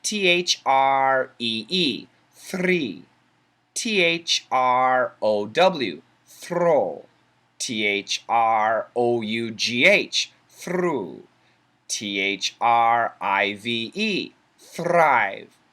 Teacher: The R does not touch the top of the mouth, the roof of the mouth, specifically the alveolar ridge.